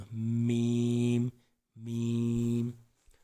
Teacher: میم بند ہونٹوں کے خشک حصے سے، باہر والے حصے سے